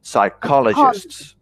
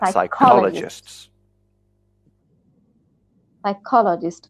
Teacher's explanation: I have to stress on second syllable.